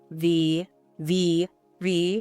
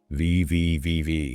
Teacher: Press your top teeth very gently against your bottom lip. Top teeth on the bottom lip. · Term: V sound